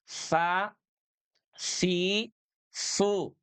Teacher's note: Ujung lidah nempel dengan gigi atas